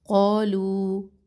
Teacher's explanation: وَإِذَا واو کے اوپر سنگل حرکت، اذا الف مدہ، قیل یا مدہ، لام کا جو زبر ہے اس کو لمبا نہ کرے، لہم لا الف مدہ، تفسدو میں واو مدہ، فی الارض را موٹی، ضاد بھی موٹا، قالو قا الف مدہ، لو مد ہے واو مدہ اور پھر اس کے اوپر بڑی مد، دو بڑی مد کو دو الف برابر لمبا کرے